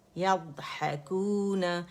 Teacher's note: شدہ نہیں ہے اس کے اندر، اس میں استطالت ہے، آواز چلے گی ، اس میں استعالہ بھی ہے، اطباق بھی ہے، آواز چلے